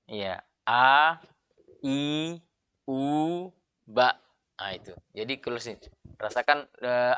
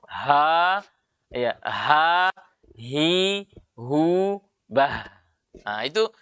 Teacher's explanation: Ada ada getaran dan tidak ada hembusan kalau Hamzah tapi kalau H ada getaran dan ada tekanan atau ada hembusan suara keluar